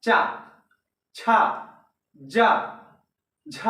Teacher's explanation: यह चा वर्ग, तालु या तालव्य से निकल रहा है